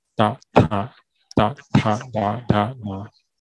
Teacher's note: 齿音是碰触到牙齿而发音，就是碰触牙齿后面而发音，舌尖碰触牙齿背面而发音